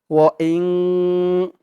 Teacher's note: ওয়া ইং হামজা দিয়ে নুন ধরবে, ইং এখানে ইকফা গুণা হবে, নুন সাকিনের পরে ইকফার হরফ ত আসছে। ও ইং ইকফা গুণাটা নাকের ভিতরে লুকিয়ে করতে হয়